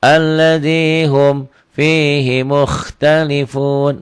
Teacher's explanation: Karena syarat marsilah qasirah itu tidak boleh ada huruf mati sebelum dan sesudahnya. Ini ada huruf mati sebelumnya. Makanya hi-nya pendek.